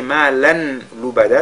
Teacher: Ici c'est malan lubada, tanwin, n'est-ce pas, va fusionner dans la lettre lam pour faire idgham bila ghunna